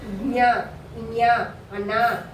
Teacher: అనునాసికాలు అంటే ముక్కు ద్వారా పలుకుబడతాయి కాబట్టి వీటిని అనునాసికాలు అని చెప్పేసి అంటారు